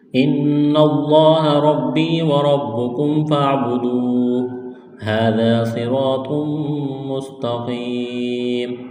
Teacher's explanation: زبر دا، الف مدہ ہے، ایک الف کے برابر کھینچنا ہے، صاد کو موٹا کرنا ہے، سیٹی کی آواز پیدا کرنی ہے ، را کو موٹا کرنا ہے، الف مدہ ہے، ایک الف